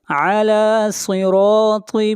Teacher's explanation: صاد کو موٹا پڑھیں گے، صاد حروف مستعلیہ میں سے ہے